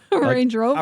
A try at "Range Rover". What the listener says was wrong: Why are you so stressing the Rover part?